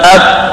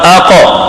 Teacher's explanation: اک میں قلقل نہیں تھا اور کاف سخت تھا, اب قلقلہ بھی ہوگا سخت بھی ہوگا